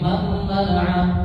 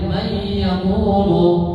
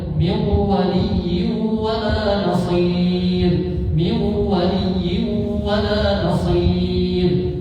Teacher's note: Misalnya man mana'a, maka tidak dibaca man mana'a, memasukkan berarti menghilangkan huruf pertama, jadi dibaca huruf kedua. Huruf pertama dihilangkan, semula mentasydidkan huruf kedua. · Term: idgham bigunnah